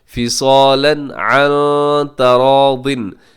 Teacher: عن میں نون ساکن کی بعد تا ہے, یہاں اخفا کیجیے گا